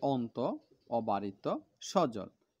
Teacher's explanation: জিভের পেছনে। অ, অ বলতে জিভের পেছন থেকে চাপ আসে, তখন অ এর পেছনটা উঁচু হয়। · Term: অস্বরধ্বনি